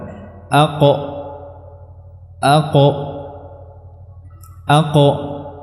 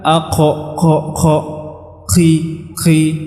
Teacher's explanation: sifatnya adalah syiddah artinya dia tidak ada ee udara yang keluar saat mengucapkan huruf ini